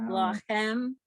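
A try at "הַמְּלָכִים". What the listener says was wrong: Yes, but don't forget that the hey at front has to be pronounced. So that's ha melachim or ham lachim.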